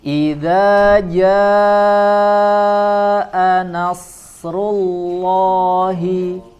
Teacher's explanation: kita baca dengan sifat tebal, kemudian diikuti dengan lafzul jalalah, ya, lafzul jalalah sebelumnya dhammah juga kita baca tebal huruf lamnya